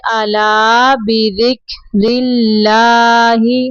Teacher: را کے نیچے زیر ہے تو را کو باریک پڑھیں گے